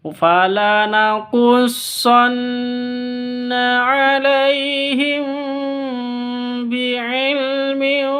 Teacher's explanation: mim sukun atau mim mati bertemu dengan ba. Bacanya samar didengungkan karena ikhfa safawi, bukan iklab ya, ikhfa safawi.